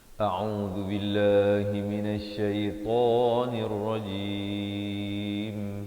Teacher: zu di hujung lidah, billah dibaca nipis dua harakat